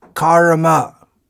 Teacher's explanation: They sound very much the same if you don't pronounce that r in karma clearly.